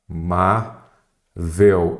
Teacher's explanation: Qual que é a sílaba tônica? Paroxítona. É a penúltima. Então, acentua as paroxítonas terminadas em L.